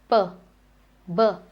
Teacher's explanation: The per and bur is bilabial